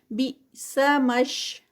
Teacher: اس کو ہم دیکھتے ہیں با کے بعد حمزہ ہے، تو جب حمزہ سٹاپ پہ آتا ہے تو اس کی ایک جرکی ساؤنڈ بنتی ہے، اس کو فوراً ہی روک دیا جاتا ہے